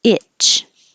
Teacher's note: Cockroach, and plural, cockroaches. Itch, and the vowel is I, because if the tongue is too high, it will sound like each. So remember, this is I, I'm sorry, I as in it and itch, and E, this means your tongue is more high, your jaw is more high.